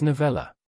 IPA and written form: nəʊˈvɛlə (novella)